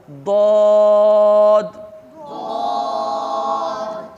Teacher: حرف حافیہ جو ہے یہ زبان کی کروٹ اور اوپر کی داڑھوں کی جڑ سے ادا ہوتا ہے